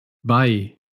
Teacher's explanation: el diptongo ei, que nosotros decimos ei, se pronuncia ai